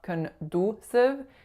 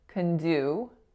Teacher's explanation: the vowel sound that it makes is that moving oo, oo sound. So make sure it's not a pure oo.